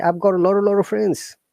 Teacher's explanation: they don't pronounce t at all they pronounce r in that case